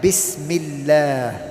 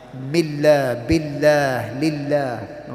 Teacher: there will be times where the word Allah is said lightly, like Bismillah. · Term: light sound